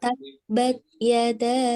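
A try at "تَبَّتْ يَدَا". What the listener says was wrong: Taknya dihembuskan. Taknya hembuskan sedikit saja.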